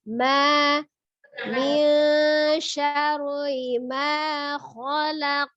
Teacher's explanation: Ingat ma-nya bainiyah ya. Lunak saja